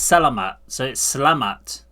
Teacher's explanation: so it's selamat, so the E isn't pronounced. So selamat siang.